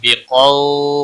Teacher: ہوا باقی کسی بھی حرکت والے حرف کو کھینچنا نہیں، بقو قاف حروف مستعلیہ میں سے پر پڑا جائے گا ، قو واو لین ہے تھوڑا نرمی کے ساتھ کھینچ کر